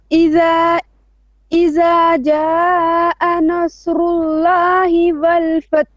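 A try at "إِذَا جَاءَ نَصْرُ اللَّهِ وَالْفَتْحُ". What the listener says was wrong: Okay, stop. So idha dhal, okay? Jaa 4 or 5 haraka. Nasru, sad is heavy, nun is flat. Nasrullahi wal fath.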